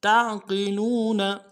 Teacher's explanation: تا کو عین کے ساتھ ملائیں گے، عین کو موٹا کریں گے